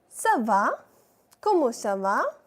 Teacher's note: So whenever under C you have a 5 type of structure that is called l'exocédile, the sound of k of C changes to s, that is the soft sound of the C